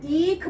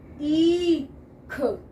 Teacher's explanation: अगर हम ईख बोले, है ना, ईख, ख पर जाने से पहले 2 गुना समय ई पर लगा, तब हम ख पर गए, ईख। जहाँ लंबी आवाज लगे, 2 अक्षरों का समय एक में लगा है दीर्घ स्वर।